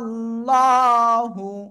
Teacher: আল্লাহ শব্দে লামের ডাইনে জবর মোটা আওয়াজে পড়তে হবে